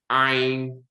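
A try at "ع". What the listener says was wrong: You see how you open your mouth there? Even with the ain, the first time you said it, like if you play this back, it's like your mouth is like, it's like you have like braces or something, you know, those something's holding your mouth.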